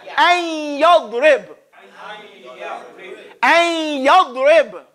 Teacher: you say ay, like you're about to say an, but you go to the ya.